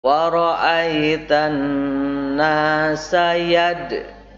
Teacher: yad ini bergetar, tapi bergetarnya kecil ya, karena qalqalah subro, mantulnya itu kecil, tidak besar. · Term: qalqalah sugro